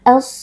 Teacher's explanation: bertemu dengan salah satu huruf Syamsiyah yaitu huruf Shad cara membacanya alif lam dileburkan dan langsung dimasukkan ke dalam huruf Shad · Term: alif lam assyamsiyah